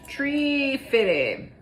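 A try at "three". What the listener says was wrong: No, not tree. 3. No, 3.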